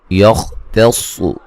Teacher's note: خا کو موٹا ادا کریں گے، صاد کو موٹا ادا کریں گے